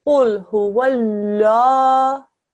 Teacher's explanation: Don't forget this is a thick and heavy qaf